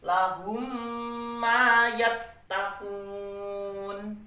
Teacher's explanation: Lahum setiap mim mati ketemu dengan mim, maka bacanya harus didengungkan. Berapa dengunya? 3 harokat atau 3 ketukan. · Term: idgham mimi